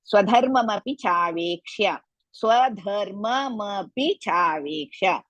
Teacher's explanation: ಧ ಮಹಾಪ್ರಾಣ as well as ಹೃಸ್ವ